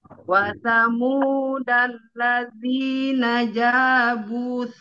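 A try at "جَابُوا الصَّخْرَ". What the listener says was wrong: Langsung, jangan bu, jangan panjang bunya, langsung. Jambus soh.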